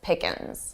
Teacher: notice how Joey from Friends also drops the G and says it very unstressed.